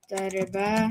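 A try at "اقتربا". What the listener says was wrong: iqtariba. Get your kasras. Stop making them dari kasras. Make them Arabic kasras. Not tariba, tariba.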